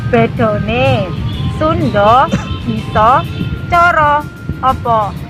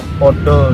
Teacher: untuk fonem A itu biasanya dalam bahasa Jawa itu diucapkan menjadi O. Misal Contohnya, bedone, Sundo, Bisa, Coro, Opo.